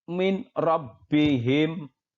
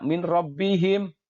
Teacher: dibaca dengan cara memasukkan atau meleburkan nun mati atau tanwin dengan huruf idgham yang ada di depannya tapi tanpa mendengung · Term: Idgham billaghunnah